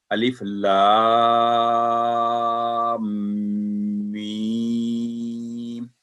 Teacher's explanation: میم پر سٹرس دے کے اس کا 2 سیکنڈ تشدید گنا کر کے پھر آگے رہو. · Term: غنہ کی آواز